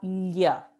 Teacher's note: Bueno, entonces, con el avanzar del latín hacia el español, esta doble L, illi, ¿no?, evolucionó a un sonido lateral palatal que se pronunciaba lla